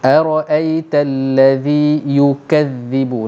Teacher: Hujung lidah dikeluarkan antara dua gigi kapak. Maknanya macam nak gigit tapi tak gigit. Sebab yang kita keluarkan sedikit itu, dia menyentuh gigi kapak atas. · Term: huruf zal